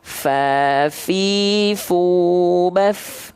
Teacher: Kalau tepat melafalkannya seperti itu, pasti teman-teman akan melafalkan fa bernafas. Pasti ada nafasnya. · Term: hams